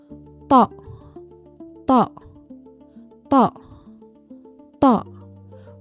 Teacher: The tongue tip does not move. The tongue root retracts. The throat tightens. The T becomes heavier, more resonant, less crisp. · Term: the heavy ta